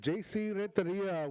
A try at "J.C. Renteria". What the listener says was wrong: J.C. Renteria. You got to roll your R's. Renteria.